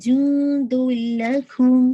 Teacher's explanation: بعد لام آ رہا ہے، تو یہ بھی ادغام ہے، لیکن ادغام ناقص نہیں ہے بلکہ کامل ہے، وداؤٹ غنہ، غنہ نہیں ہوگا، پوری تنوین کی جو ساؤنڈ ہے وہ لام کے اندر مرج ہو جائے گی